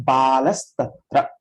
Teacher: This Visarga changes to Sa. Balaha Tatra will become Balas Tatra. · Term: Sadesha Sandhi